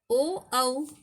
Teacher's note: ओ औ का उच्चारण स्थान कंठ और ओष्ठ है।